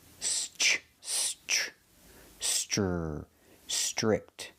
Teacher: The TR makes a ch chicken sound. Str, strict.